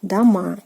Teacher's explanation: by adding the a ending again, дома, and again stress falls on the a